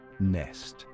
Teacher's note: It's a nasal sound, which means the air comes out through your nose. This is what gives the letter N its unique sound.